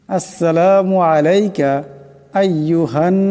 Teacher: নুন মুশাদ্দাদ আছে এক কালি পরিমাণ গুন্না করিয়া পড়তে হবে